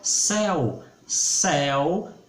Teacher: céu céu é aberto perceba o som